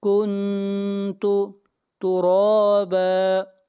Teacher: را کو کھینچ کر پڑھیں گے ایک الف کے برابر، اور را کو موٹا پڑھیں گے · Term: کھڑی زبر